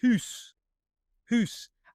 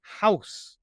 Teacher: The old English was hoose. But in England there was a great vowel shift. And hoose became house.